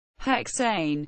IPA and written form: ˈhɛkseɪn (Hexane)